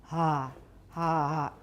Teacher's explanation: if we have a breathy H, we're going to hear breathiness in the ah as well